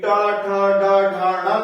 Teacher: तो इनके उच्चारण स्थान मूर्धा है